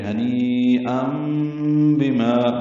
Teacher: ام میں تنوین کے بعد با آنے کی وجہ سے اقلاب ہو رہا ہے. نون کی جگہ نون ساکن جو ہے ان میں جو نون پڑھا جاتا ہے تنوین میں، اس کی جگہ میم پڑھیں گے.